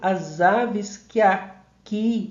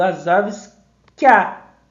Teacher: Então, eu não digo as aves que aqui, eu digo as aves que a. É como houvesse uma fusão sonora em que e a. Fica que a. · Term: fusão de vogais átonas